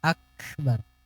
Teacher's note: Jadi kafnya itu beliau keluarkan dulu hamasnya.